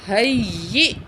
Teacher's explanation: رحمتوں، واو زبر وا، ہا زبر یا، ہئی، ہا زبر یا، ہئی، یا زیر حمزہ ی، ہئی، تو حمزہ کو جھٹکے سے پڑھنا ہے